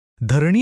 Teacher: हा सुद्धा आखूड आहे म्हणून तोही लघु म्हणजे यु झाला पण शेवटी नी बघा तो दीर्घ आहे म्हणून तो गुरु झाला